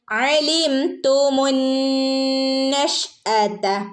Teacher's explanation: ഐൻ തൊണ്ടയുടെ നടുക്ക് നിന്ന് വരുന്ന അക്ഷരാണ് ഐൻ